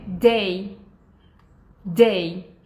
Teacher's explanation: E a parte um pouquinho mais para trás tá tocando aqui o alveolar ridge. Agora, quando vocês falam dia em inglês, tem que ser a ponta da língua tocando o alveolar ridge